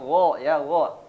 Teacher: huruf Gin di tenggorokan bagian atas